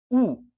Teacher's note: उ बोलते ही मुंह वृत्ताकार हो गया तो उ वृत्तमुखी है